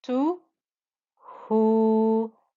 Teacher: the dhamma with the waw, giving us the 2-count stretch